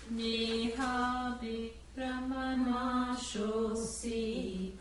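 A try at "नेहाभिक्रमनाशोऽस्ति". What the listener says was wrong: No, not nashosi. Nashosti. Neha bhikramanashosti.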